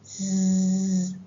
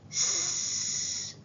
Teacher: Can you feel the tickle? That means your voice is on.